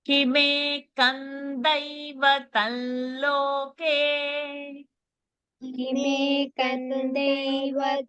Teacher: അടുത്ത അനുസ്വാരം മ അല്ല ദൈവത്തം അല്ല അത് ല ആയിട്ട് വരും